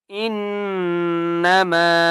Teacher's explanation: نون کے اوپر تشدید ہے غنہ کریں گے